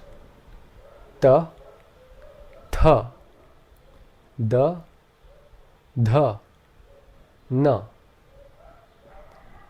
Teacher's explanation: The next group of consonants are called dentals, and they are fairly easy to pronounce. Here the tongue comes up against the back of the teeth, which are slightly parted